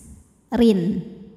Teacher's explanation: Namun jika diteruskan ke ayat selanjutnya, ra-nya ini kan tetap hidup, harokatnya kasroh tanwin ya, maka dibacanya tipis